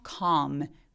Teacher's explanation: 아까 walk처럼. 그래서 calm, 턱 엄청 벌리면서 혓바닥이 바짝 바닥에 누워지는 약간 아 소리에 비슷한 calm 이런 소리가 나는데요